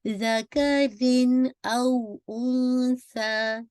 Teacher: तनवीन या नून साकिन की आवाज़ को वाज़ेह करना पड़ता है, प्रोमिनेंट करना पड़ता है